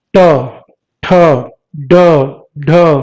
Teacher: जीभ जो है ऊपर वाले तालू से जाके मुड़ती है, फिर आवाज उसमें निकलती है। मुड़ के एकदम से झटके से छूटती है जीभ, तब आवाज निकलती है। तो इनको बोलते हैं मूर्धन्य व्यंजन या मूर्धा वाले व्यंजन, है ना।